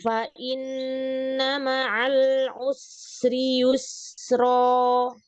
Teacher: ketika kita membaca huruf sin ini, maka alirannya sangat deras karena dia udah nafasnya mengalir, suaranya pun mengalir dan dia ada tambahan suara. Berarti tambahan suara itu berarti rokhawahnya nambah juga, ya.